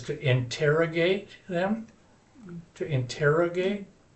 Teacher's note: To interrogate, accents on the ter, right?